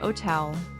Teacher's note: Pronouncing the h in hotel like otel.